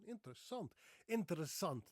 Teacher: Now you heard that there's the R in there, right? the rolling R